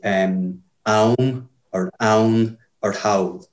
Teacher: if you take the sound ow, you get that a lot in Munster Irish in places where you don't get it in other dialects. So you get words like aum or own or howl. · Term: diphthong